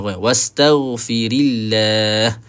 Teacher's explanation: Huruf ghain ah dia tempat dia sama dengan huruf kha ya. Kalau silap kalau silap tempat boleh jadi setengah orang tu baca ghain dengan kha wastaghfirillah.